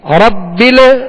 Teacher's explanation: ربل یہاں قلقلہ نہیں کریں گے، ربل آواز ہلے نہیں